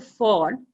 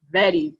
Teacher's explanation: say F sound and V sound, voiceless and voiced. Voiced was like sound which is coming out of the, you know, as I said it, what vibration in the throat for voice sounds.